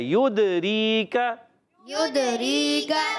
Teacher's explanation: یا کو دال سے ملانا ہے اور دال کو ہلانا ہے، قلقلہ کرنا ہے